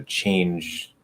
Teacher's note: So you could get instead of j, it would be ch, that would be voiceless. But then that D is going to turn into a complete T, right? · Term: end of word devoicing